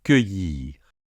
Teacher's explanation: avec le y, et le R final qu'on entend légèrement ici. Cueillir.